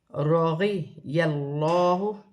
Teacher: تو لام موٹی پڑھی جائے گی